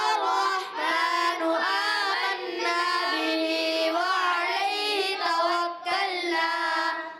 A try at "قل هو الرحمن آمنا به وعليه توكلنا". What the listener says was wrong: نون مشدد میں ایک الف کا غنہ بھی پورا کرنا ہے. پچھلی مرتبہ ہی غنہ چھوڑا اور اب بھی غنہ چھوڑ دیا. دیکھیں ابھی آپ کو یہی سمجھایا تھا نون مشدد میں ایک الف کا غنہ ہوتا ہے.